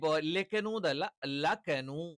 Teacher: ലാം എന്താണ് നാവിന്റെ അറ്റം മുൻപല്ലുകളുടെ മോണയോട് ചേർത്തു വെച്ചുകൊണ്ടാണ്